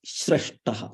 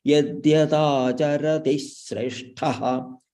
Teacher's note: Here there is a hraswa followed by shra, that is shresthaha. So there will be a ditvam there.